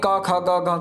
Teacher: जो ये क वर्ग है इसका स्थान है जिह्वा मूल